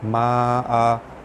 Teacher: Okey, adamal asma'a, alif lam bertemu hamzah, hukumnya alif lam qamariyah, lam dibaca jelas. Ma'a, huruf mad bertemu hamzah dalam satu kalimah, hukum dia mad wajib mutasil, dibaca panjang 5 harakat